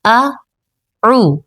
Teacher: اکثر جب ہم تعوذ پڑھتے ہیں، اعوذ باللہ جسے کہا جاتا ہے، اعوذ میں پہلے حمزہ ہوتی ہے اور اس کے بعد عین، تو اعو میں جب ہم پڑھتے ہیں تو بعض اوقات پڑھتے ہوئے اکٹھا اعو نکل جاتا ہے یا پھر اعو پڑھا جاتا ہے، تو اعو حمزہ کے فوراً بعد ہم نے اپنی آواز کو عین میں بدلنا ہے، اعو، ٹھیک ہے۔